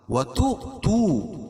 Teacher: حمزہ جو ہے واو کی شکل میں ہے اور اس کے اوپر جزم ہے، یہاں جھٹکا دیں گے